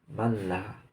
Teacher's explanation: Yang ketiga, manlah mim nun mati jumpa dengan lam, itu hukumnya idgham bila gunnah, yaitu memasukkan nun dalam lam dengan ketiadaan dengung suara